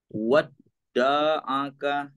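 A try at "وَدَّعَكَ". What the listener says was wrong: Itu da-nya udah kepanjangan tuh, udah ketarik da gitu ya. Wadda'aka gitu. Satu harokat saja. Wadda'aka gitu.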